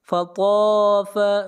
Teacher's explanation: طا حروف مستعلیہ میں سے ہے، طا کو موٹا پڑھیں گے۔